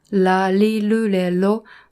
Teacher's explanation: So, and also in Japanese, we have difficulty telling the difference from L and R, because in Japanese, both L and R will sound like L